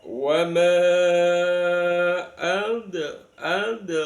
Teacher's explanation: Ada ketentuan apabila ada mad thobi'i bertemu dengan alif di kalimah yang lain, maka namanya mad jaiz munfasil. Mad jaiz munfasil bisa dibaca dua harakat 3 4 sampai 5 lebih afdal kita baca lima harakat